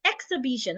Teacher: the first and the third syllables are stressed. But then the third syllable is the most important stress. So say the third syllable loudest, longest, and clearer. · we are stressing both the X and the B. It's just that one has more stress than the other. But it still stands the fact that we are stressing both.